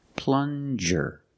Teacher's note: Use the regular N and the J sound, like juice.